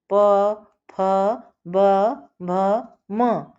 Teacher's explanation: ओष्ठ दोनों होठों से